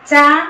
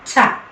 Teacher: ആദ്യത്തെ അക്ഷരമായ ചായയുടെ കൂടെ ഹ എന്ന ശബ്ദം ചേരുമ്പോഴാണ് അതിഖരം ഉണ്ടാകുന്നത്